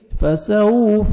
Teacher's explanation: فسوف واو لین ہے، واو ساکن سے پہلے فتحہ نرمی سے ادا کریں گے. فسوف لپس کو راؤنڈ میں لے کے جائیں گے تاکہ اچھی طرح واو ادا ہو.